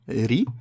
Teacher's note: le ra, le R roulé avec une kasra